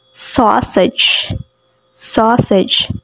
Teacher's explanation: notice that it is a short little ah sounds with rounded lips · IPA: [aU]